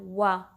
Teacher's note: अपने टीथ का इस्तेमाल आपने नहीं करना, आपने होंठों को गोल करना है